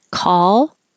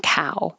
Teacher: So call, don't round your lips, keep them ah, and cow, you do round your lips.